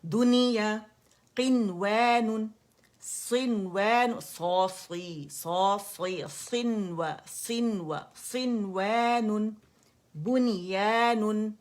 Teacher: ہے اچھا اب اسے کیسے پڑھیں گے دنیا قنوان ٹھیک ہے میں باقاعدہ نون کو اس کا اظہار مطلق کر رہی ہوں نون کو ظاہر کر رہی